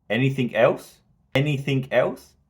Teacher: if you listen to that there's actually two Rises